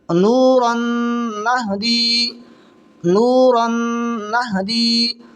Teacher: دو زبر کی تنوین کے بعد میں نون آ رہی ہے، تو ادغام مال گنہ ہوگا